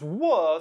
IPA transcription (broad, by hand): w